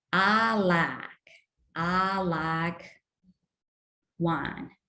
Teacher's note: A very characteristic feature is monophthongization. So diphthongs like I, my, like, they are monophthongized.